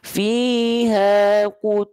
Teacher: dibaca dengungannya kuat dengungan kuat itu menyerupai bunyi Eng